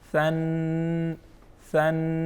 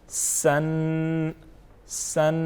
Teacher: ثا کو نرم پڑھیں گے، سین کو اس کی نسبت سخت پڑھیں گے اور سیٹی جیسی آواز اس میں ہم پیدا کریں گے